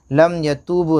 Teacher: दोनों में वाव साकिन से पहले पेश है, वाव मद्दा थोड़ा खींच कर